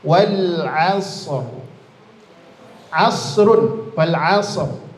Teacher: Ro sukun sebelumnya fathah tebal.